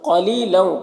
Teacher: قاف حروف مستعلیہ میں سے پر پڑھیں گے، لی میں واو یا مدہ ہے اسے 1 الف کے برابر کھینچیں گے اور لو تنوین کے بعد واو ہے، حروف یوبن میں سے تو تنوین کو واو سے ملا کر غنہ کے ساتھ میں پڑھیں گے، اس کو ادغام ناقص کہتے ہیں۔